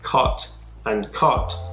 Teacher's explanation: The Western American accent is influenced by the cot merger, meaning the vowel sounds A and O in words like cot and cot are pronounced the same, whereas they're pronounced differently from each other in other regions. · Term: cot-caught merger